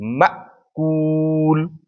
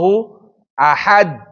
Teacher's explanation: جهر د وجې نه آواز جګ ده، خو د شدت د وجې نه فوراً قطع کېږي، جریان نه پیدا کوي